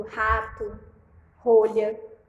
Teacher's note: o r forte o que vai vibrar mas vai vibrar o palato mole que eu leve forte o r no começo desse palavra e